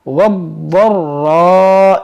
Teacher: یہاں پر دیکھیں ضاد حروف مشتعلیہ موٹا بھی کرنا ہے اور مشدد ہے